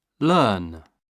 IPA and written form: lɜːn (learn)